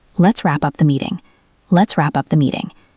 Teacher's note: The P connects to the up.